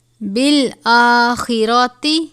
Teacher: بالآخرۃ، خا کو پر پڑھا جائے گا